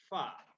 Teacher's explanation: ujung dua gigi seri atas bertemu bibir bawah bagian dalam